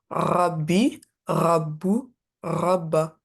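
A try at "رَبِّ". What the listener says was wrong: Est-ce que quand tu dis le ra, ta langue, elle est derrière tes deux langues pardon. parce qu'en fait, moi, j'ai plus l'impression que tu dis rein, rein, rein, et ça sort de là, tu vois, rein.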